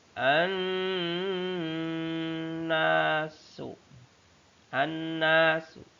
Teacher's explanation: Ada nun bertasydid namanya gunnah. Keterangannya dibaca secara mendengung.